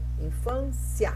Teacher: outros teóricos que viam aí um ditongo crescente. Primeiro o I, semivogal, depois o A, vogal.